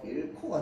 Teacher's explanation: 히읗 남아있고 뒤에 고가 있으니까 이 히읗과 고가 합쳐져요